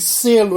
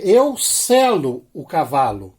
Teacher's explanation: um E é fechado, o outro E é aberto